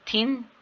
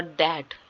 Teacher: द dental fricatives are द initial sound in द words थिन and दैट